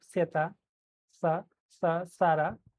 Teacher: Now zeta also has two types of sounds. Zeta zeta interdental where you have to put your tongue in between the teeth.